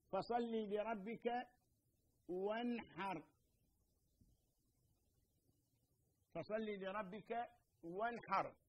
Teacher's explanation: النون الساكنة في كلمة وانحر حكمها الإظهار، السبب لمجيء حرف الحاء بعدها